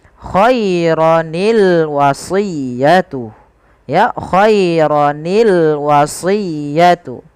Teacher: sukun yang pertama dikasrahkan sehingga berubah menjadi Khaironi sehingga kita membaca lafal khairon Al wasiyah bukan lagi khairal wasiyah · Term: Bertemunya dua huruf Sukun